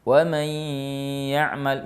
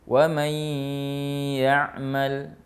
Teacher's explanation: Pertama, nun itu dimasukkan, setelah dimasukkan ke dalam huruf setelahnya, ya, salah satu huruf idgham bigunna, kemudian setelah itu didengungkan. Ya, dibaca, digunakan, ditahan, jangan tergesa-gesa, ditahan 2 harakat.